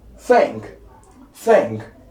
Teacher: so the tongue is in between the upper and the lower teeth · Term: voiceless Dental